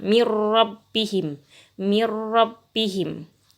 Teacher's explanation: Nun sukun masuk ke ro, nun sukun bertemu ro, masuk ke ro tapi tidak mendengung.